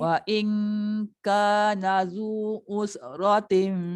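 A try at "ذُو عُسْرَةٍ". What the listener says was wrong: Jaga sin. Usratin. Jangan us.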